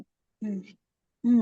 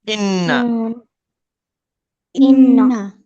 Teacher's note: जबान की नोक और ऊपर के सामने वाले दांतों की जड़ से नून अदा होता है। जो मखरज लाम का है वही नून का है।